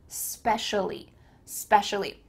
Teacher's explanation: she cuts off the e at the beginning and she says specially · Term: spoken reduction